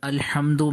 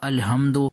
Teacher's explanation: اس کو ہا، باریک ہا کے ساتھ مجھے پڑھنا ہے حلق سے، اور اگر میں نے اس کو بھاری آواز کے ساتھ پڑھا الحمد تو اس صورت میں معنی بالکل چینج ہو جائے گا۔